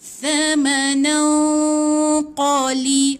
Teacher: Kan nan tu, tak boleh sebut thamanan, tak boleh sebut nan. Okey, gantungkan sikit lidah, lepas tu tahan 2 harakat. Yang kedua kena buat dengung 2 harakat. Yang ketiga kena di sisi huruf. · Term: ikhfa hakiki